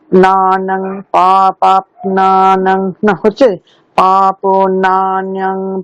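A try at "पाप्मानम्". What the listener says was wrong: পাপমানম, পয় ময় আকারটা, হ্যাঁ, পাপমানম। পাপ নানম নয়, পাপ মানম, ময়াকার, এম এ, পাপ মানম।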